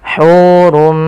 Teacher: Pada dasarnya kalau tanwin itu kita bunyikan dengan suara nun yang dimatikan. Asalnya hurun bertemu dengan mim, tanwinnya masuk kepada huruf mim dan diganti bunyinya menjadi bunyi mim. Maka hurum, maka ini hukum tajwidnya kita namakan dengan idgham bi gunnah.